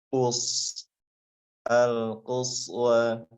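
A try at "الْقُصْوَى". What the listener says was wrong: Panjang wa. Panjang. Panjang. Mad.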